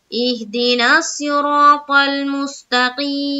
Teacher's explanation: ठीक है, तो देखिए यहाँ पर रुके, 3 से 4 अलिफ की मकदार के बाकदर रुकेंगे और स्टॉप कर 3 से 4 अलिफ की मकदार के बाकदर खींचते हुए रुक जाएंगे